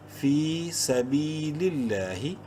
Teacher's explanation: لام زیر لل، لفظ اللہ سے پہلے لام کے نیچے زیر ہے، لام کو بولڈ نہیں کرنا، لمبا ضرور کریں گے کھڑی زبر کی وجہ سے 1 الف کے برابر